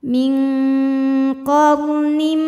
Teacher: hukum Idam bunah karena ada tanwin kasrah yang menghadapi huruf mim cara bacanya tanwin dileburkan ke mim qnim Jadi bukan lagi Nin tapi NIM masukkan ya disertai bunyi